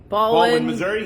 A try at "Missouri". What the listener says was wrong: No, you said it wrong. You got the emphasis on the wrong syllable again.